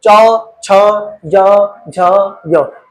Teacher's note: इसको बोलते हुए देखोगे आप तो तालु पर जीभ टच हो रही है। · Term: तालव्य ध्वनियां